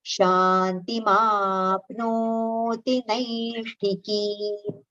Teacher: in second charan, second word, naishtikim, that ki should be prolonged